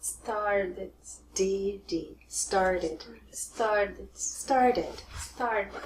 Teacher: Start ends with a T, but many Americans are going to change that. It will sound very much like a D sound. So instead of started, you will hear started.